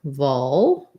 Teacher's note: we have the ul, very dark L here, bit of a schwa before it